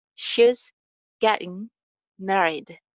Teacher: Getting में हम first syllable को stress करेंगे और जो इसका th sound है, it's flap t, so it's getting.